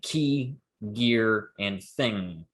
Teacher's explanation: those sounds end with velar consonants where the back of your tongue is touching the velum